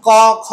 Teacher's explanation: স্বরতন্ত্রীর কম্পন অনেক কম হয়, তাই এগুলিকে বলা হয় অঘোষ বর্ণ